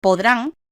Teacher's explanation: tiene su fuerza de acentuación en la última sílaba y termina en n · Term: palabras agudas